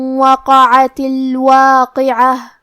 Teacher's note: حرف القاف کی ادائیگی زبان کے جڑ اور تالو کے نرم حصے سے ہے